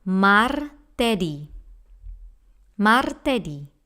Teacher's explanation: Mar, remember the hard and rolling R.